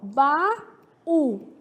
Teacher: baú é oxítona, porque tem como sílaba tônica a última. Porém, quando eu pergunto quanto à justificativa do acento gráfico, baú tem acento gráfico por se tratar de uma regra de hiato.